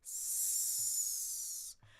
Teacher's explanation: And then my tongue is going to go forward, whether it's the E or the I, r, r, re, or r, r, r, I, either way. And then we have that S lift up on the bump, friction, s.